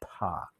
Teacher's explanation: air rushes through my vocal cords rushes through my lips and that's why i get that puff